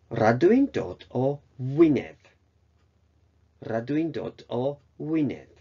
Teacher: G▁の時は、その▁G▁って音がなくなっちゃいます